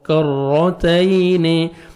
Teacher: تا کو باریک پڑھنا ہے اور یا لین ہے، نرمی سے ادا کریں گے